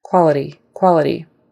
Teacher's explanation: That T in there is going to be kind of a stop, tap sound. So somewhere in between a T and a D. It's not quite a D, it's not quite a T.